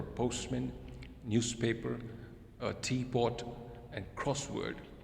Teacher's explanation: Compound words that they have 2 items. So it is the first word which is stressed normally.